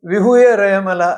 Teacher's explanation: बहुत से लोग वि रला ऐसा उच्चार कर देते हैं जो अशुद्ध है क्योंकि ह में छोटी उ की मात्रा बना देते हैं